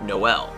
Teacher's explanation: two vowels are pronounced separately either with or without a glottal stop rather than as a diphthong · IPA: /nɔ.ɛl/